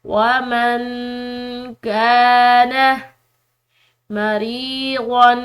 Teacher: یہاں پر نون ساکن ہے، اس کے بعد کاف ہے جو کہ حروف اخفا میں سے ہے، تو یہاں پر ہم اخفا کریں گے۔